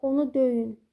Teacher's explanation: Döyün deyəndə, baxın, burada yenə deyirəm, əmr şəklində olanda vurğu öyə düşür, əvvələ düşür, feildir.